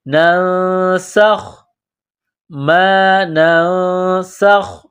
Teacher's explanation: نون ساکن کے بعد سین ہے، حروف اخفا ہے تو نون ساکن پر غنہ کریں گے، سین میں سیٹی کی آواز پیدا کریں گے، سین کو باریک کریں گے